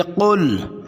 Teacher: قاف زبان کی جڑ اور لحاظ موٹا کر کے پڑھیں گے. قل، حمزہ اقصی حلق سے، عو اعو، عین وسط حلق سے، اور عین کے بعد واو مدہ، اعوذ.